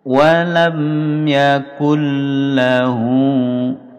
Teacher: masuk lam idgham bilagunnah tanpa mendengung